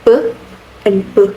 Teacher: the sound p and b are both bilabial stops, meaning they are produced with closing the lips and stopping the airflow, p and b. The main difference between them lies in voicing.